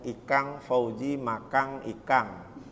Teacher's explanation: Orang yang tinggalnya di Sulawesi Selatan ya begitu lingkungannya. Sehingga kalau dia mengucapkan N itu menjadi sengau ya